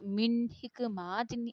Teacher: ناک کے بغیر آواز کو واضح کر، من حکمات، اس کو ہم نے گناہ نہیں کرنا بلکہ واضح پڑھنا ہے۔ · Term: اظہار